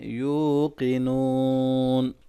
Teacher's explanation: یوقنون دونوں واو مدہ ہے، اس کو لمبا کریں گے اور قاف کو موٹا پڑھیں گے، آخر میں لمبا کر کے وقف کریں گے.